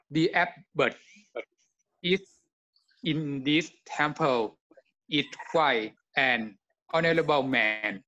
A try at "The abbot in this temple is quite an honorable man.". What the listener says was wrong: Yeah, ▁so ▁is, ▁you ▁didn't ▁pronounce ▁the ▁S ▁sound, ▁okay, ▁quite.